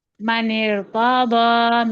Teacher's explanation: میم کی زبر لمبی نہ کریں